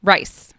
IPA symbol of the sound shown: r